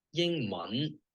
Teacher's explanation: Mun, that little rising contour at the end.